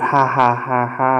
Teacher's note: you find nasality in posed laughter